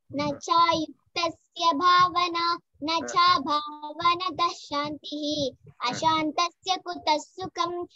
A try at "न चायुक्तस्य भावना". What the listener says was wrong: Excellent.